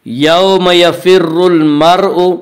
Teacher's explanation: یہاں را مشدد متحرک کے اوپر پیش ہے، اس لیے را مشدد متحرک کو پر پڑھیں گے۔